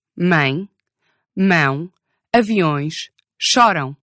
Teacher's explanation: these little short E and U sounds become nasal when the main vowel is a nasal vowel.